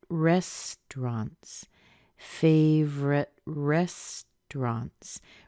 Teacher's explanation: rest is the strongest part